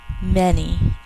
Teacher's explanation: This word rhymes with any, and so it's going to have the same rules in speech. In the flow of speech, it's going to come out as an eh sound instead of an ah. But it's two syllables.